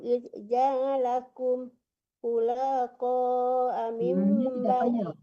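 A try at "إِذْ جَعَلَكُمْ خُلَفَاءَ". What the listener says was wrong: ulang dari ja'alakum khulafa, jangan ditahan lanya tidak panjang. Mi-nya juga jangan tertahan, jangan qaumi Nuh, di mi-nya jangan tertahan, qaumi Nuhin.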